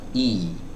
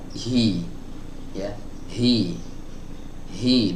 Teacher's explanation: Kalau huruf H start awalnya itu enggak tertutup banget, tapi ada celah sedikit.